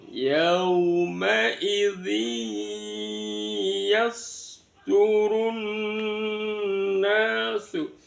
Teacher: Yasduru, ru itu dibaca tafkhim, kemudian di depannya ru itu ada al ta'rif ya, alnya tidak terbaca, langsung masuk ke tasjidnya nun, maka namanya bacaan idgham syamsiyah